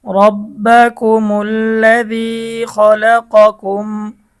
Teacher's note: মিম সাকিনের পরে বাও নাই মিমও নাই মিম সাকিনের ইজহার গুন্নাহ ছাড়া স্পষ্ট পড়িতে হয়